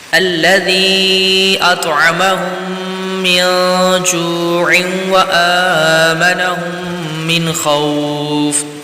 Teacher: من خوف میں یہاں پر اظہار کا قاعدہ ہے تو یہاں پر غنہ نہیں کریں گے